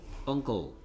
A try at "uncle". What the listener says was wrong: uncle 언클 언꺼가 아니고 언클 언클 언클